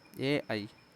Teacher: कंठ तालव्य ठीक है यानी कंठ और तालू से बोला जाता है